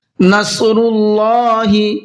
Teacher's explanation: نصر اللہ، یہ صاد ہے، صاد کو بھی پر کر کے پڑھنا ہے